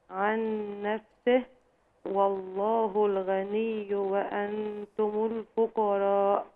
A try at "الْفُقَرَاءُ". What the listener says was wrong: لا، الفقراء اديهم حقهم.